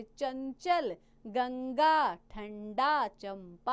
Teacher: तो ये क्या है बच्चों, वर्णमाला में आए अंक वर्ण को अनुस्वार कहते हैं। जिस स्वर के उच्चारण में वायु केवल नाक से निकलती है उसे अनुस्वार कहते हैं। इसका प्रयोग पंचम वर्ण के स्थान पर होता है, यानी कि 5वें वर्ण के स्थान पर।